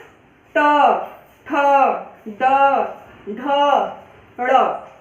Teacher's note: हमारी जो जीभ है वो पीछे की तरफ मुड़ती है और मूर्धा को स्पर्श करती है।